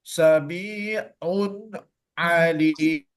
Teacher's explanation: ain itu kan tidak termasuk huruf khasyum. Jadi dia tidak ada akan masuk ke dalam hidung. · kalau kita baca mim berbaris bawah pun ternyata naik dia ke hidung kita